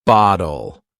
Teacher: softens the T in bottle to almost sound like a D